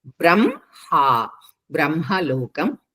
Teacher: ఉంది సంయుక్తాక్షరం బ్రహ్మలోకం బ కింద రకారం హ కింద మకారం రెండు సంయుక్తక్షరాలు హ కింద ఎప్పుడైనా సరే మకారం వచ్చినా నకారం వచ్చినా ఫస్ట్ కింద లెటర్ ని పలికి పై లెటర్ ని పలకాలి